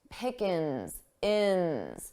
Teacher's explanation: I dropped that g sound from the ing